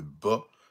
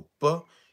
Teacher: il est sonore parce qu'il y a une vibration des cordes vocales, contrairement au pas qui est explosif aussi, mais il n'y a pas de vibration des cordes vocales